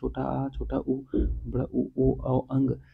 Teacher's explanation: जीभ का पश्च भाग कार्य करता है उन्हें पश्च स्वर कहते हैं